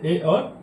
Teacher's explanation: कंठ और तालव्य की सहायता से ए और ऐ बोले जाते हैं।